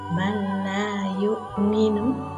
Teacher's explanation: Yang ketiga adalah man la yu'minu, nun sukun bertemu dengan lam. Hukum bacaannya adalah idgham bila gunnah. Cara membacanya tanpa mendengung.